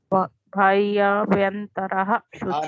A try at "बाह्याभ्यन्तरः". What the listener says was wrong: नहीं, बा बकरी का, बाह्याभ्यंतरः।